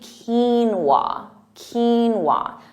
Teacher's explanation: it's actually quinoa quinoa so that emphasis on Keen